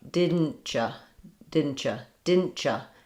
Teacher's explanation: So sometimes that t and that y sound move into more of a ch sound.